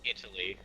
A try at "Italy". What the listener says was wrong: No, well, it's like Italy, but you take the T out and put a D in there.